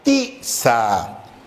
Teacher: donde notamos que el acento está en ti